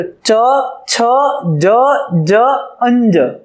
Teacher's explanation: ચ નું ઉચ્ચારણ કરતી વખતે જીભનો પાછળનો ભાગ એ તાળવા સાથે હવાને ઘર્ષણ કરી અને એનું ઉચ્ચારણ થાય છે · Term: તાલવ્ય